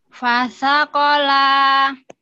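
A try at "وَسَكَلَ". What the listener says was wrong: Wah, bukan fa. Wasakola. Lagi.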